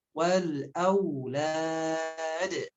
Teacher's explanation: Wal alif lam qamariyah tanpa ada pantulan lamnya. Au, nah di sini ada harf lin lagi, dilembutkan bunyi wawunya. Wal aulad, jangan aulad, jangan, tapi wal aulad, ya.